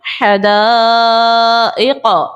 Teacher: अलिफ से पहले जबर है, अलिफ मद्दा, हमजा जो है वो मद्दे मुत्तसिल वाला है, छोटा सा हमजा बना हुआ है, आइन वाला हमजा और हमजा ये इसी कलमे में, हदाइक़ पूरा एक कलमा है, तो यहाँ पर मद्दे मुत्तसिल का कायदा लगा देंगे और 4 सेकंड की मिकदार इसको खींच कर अदा करेंगे